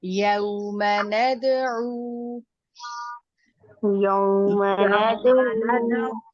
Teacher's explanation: ندعو میں دال کی اوپر قلقلہ ہے، قلقلہ واضح کر کے کیجیے، اور عین کے اوپر واو مدہ ہے تو اس کو آپ نے 2 حرکات تک بڑھا کر پڑھنا ہے۔